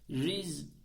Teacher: Z'yi biraz akıtıyor hemen kesersek S'ye döner riska riska gibi olur riz [Müzik] riz sakin nan sonra ye